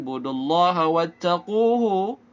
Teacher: Du dibaca 2 harakat. Budullaha, hamzah wasal di tengah diabaikan